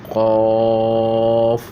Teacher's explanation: قاف، یہ ہم تالو کو جو ہے اوپر لگا کے پڑھیں گے تو یہ موٹا نکلے گا